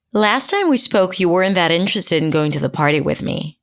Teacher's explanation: when people start a new idea, there is always what I call that wavy intonation where they start really high in pitch and then they go into that normal American intonation